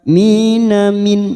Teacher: nun sukun bertemu hamzah idhar halqi kita baca jelas tanpa mendengung